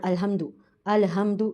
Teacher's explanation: अल पे मैं लाम पर कलकला कर रही हूं हा को मैं ह के मगर से पढ़ रही हूं और मीम पर भी मैं रुक रही हूं, गुना कर रही हूं।